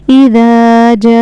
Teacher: यहां पे इस मदद को हमें चार अलिफ के बराबर खींच कर पढ़ना है। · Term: मद्दे मुत्तसिल